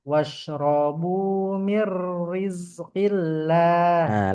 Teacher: mir setengah mengalir, tipis dan lembut